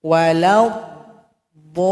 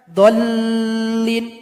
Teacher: Dipanjangkan dulu enam harakat baru tasdid kepada huruf lam. Walad dol. Ah baru tasdid kepada lam lin. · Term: mad lazim